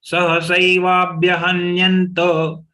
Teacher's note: When we say hanyanta, we have to see that ta is spelled out fully, not halanta.